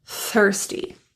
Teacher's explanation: The TH in thirsty also involves that tongue tip creating friction with your front top teeth. So if you pronounce this word as thirsty, allow your tongue tip to relax out and away from that front tooth to allow some air through first.